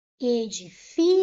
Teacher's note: Última, penúltima sílaba mais forte. É uma palavra paroxítona.